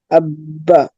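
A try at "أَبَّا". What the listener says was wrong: আব্বা। আব্বা ধরে রাখতে হবে না। হামজা বা জবর আব, বা জবর বা, আব্বা। আব্বা এভাবে বলতে হবে না, হ্যাঁ? ধরা রাখবে না, ডাইরেক্ট ছেড়ে দিতে হবে।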